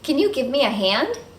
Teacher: notice that the modal verb can here is reduced to /kuhn/